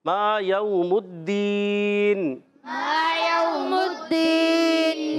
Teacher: मा को खींचना है, यऊ को नहीं खींचना।